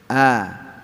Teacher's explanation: A, I, U di tenggorokan bawah.